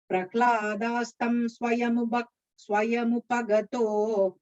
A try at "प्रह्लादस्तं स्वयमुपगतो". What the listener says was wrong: Again, the Prahladastam. It sounded like you said a long. Prahladastam swayamupagato.